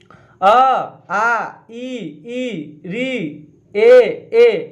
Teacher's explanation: ओठ गोल नहीं होते हैं उसे अवृत्ताकार स्वर कहते हैं।